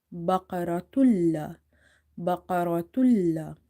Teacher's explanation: So here the condition is we have idgham, merging, but there is no nasalization. So ta, lam, to the ma, tul, baqaratul, lam, alifatha, la, baqaratul, baqaratul. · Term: idgham, meaning merging